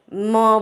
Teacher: जैसे आप प बोलो तो आपको माउथ के एयर का एक फील होगा हाथ में, लेकिन आप म बोलो तो आपको मुंह से हवा का कोई फीलिंग नहीं आएगा। आपको क्लियरली समझ में आएगा that the air is passing through the nose